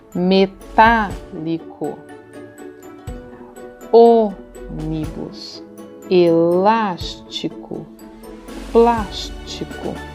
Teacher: observe que todas essas palavras têm a antepenúltima sílaba forte